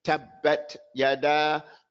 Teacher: You don't hear the air on the first ta.